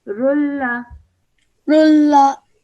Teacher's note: So when that happens, you straight away join the ra to the lam, only producing the sound of one of the tanweens